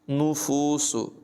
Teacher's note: नुफूसु नून मुशद्दद में गुन्ना भी करेंगे